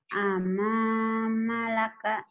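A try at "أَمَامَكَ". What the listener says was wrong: Amamalaka mana? Nggak ada A. Enggak ada lamnya, ini bukan lam. Ini kap, tangkainya ke sini. Amamaka.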